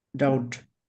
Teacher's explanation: when we have B and T together we drop the sound of B. So B pronounce this second word D sound. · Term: silent letters